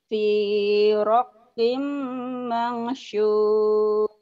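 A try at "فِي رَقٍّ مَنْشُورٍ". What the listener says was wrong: Shinnya keluarin.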